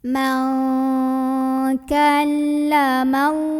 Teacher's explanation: Jadi kita tidak baca jelas tidak, melainkan samar-samar mau bilang kaf sambil ada dengungannya. Maka Nah, karena huruf kaf ini makhrajnya jauh dari nun, maka bunyi dengungnya terdengar lebih besar. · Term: ikhfa ab'ad